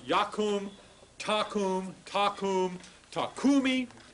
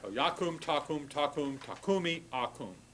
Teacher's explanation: the accent stays on the original root of the word